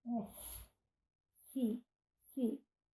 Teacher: No caso das semiconsoantes ou semivogais, essa adaptação não acontece, como, por exemplo, FI para barbatana, o F tem uma realização arredondada, que desaparece em decorrência da vogal I. F, fi, perdeu o arredondamento.